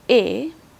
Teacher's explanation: as high as e so that's why it's a mid vowel the position of the tongue is not as high as e it's somewhat a bit lower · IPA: /e/